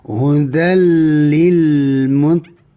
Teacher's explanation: Ni huruf qaf dia baris bawah, kena hati-hatilah jangan ditebalkan sangat ya.